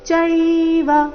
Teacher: ಚೈವ ಅಂತ ವ ದೀರ್ಘ ಮಾಡಬಾರದು